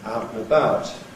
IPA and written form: ˈaʊt nə ˈbaʊt (out and about)